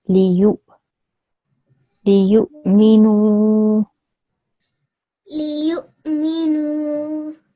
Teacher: If there is a hamza sakin, then a soft jerk sound is produced from the bottom of our throats, okay? So how you would say this, the correct way is liyu.